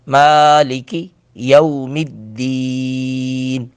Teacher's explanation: اب ذرا غور کریں کہ مالکی کاف کو بالکل باریک بھی پڑھا ہے، چھوٹا بھی پڑھا ہے، اس کو لمبا نہیں ہونے دیا